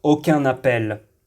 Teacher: Nous lisons le son nasal /ɛ̃/, ajoutons un N et lisons le mot suivant.